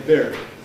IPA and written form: bɪrd (beard)